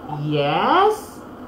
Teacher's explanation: The intonation in saying the word yes is rising.